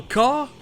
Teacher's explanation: on a AH qui est une sorte de mixe entre A et O